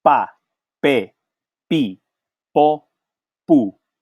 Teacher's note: notice that I'm not producing any stream of air out of it